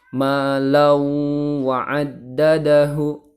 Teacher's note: Fathah tanwin bertemu dengan huruf wawu, sehingga tanwinnya ini dimasukkan ke huruf wawu dan ditahan 3 harokat suaranya menjadi malau wa'addadahu.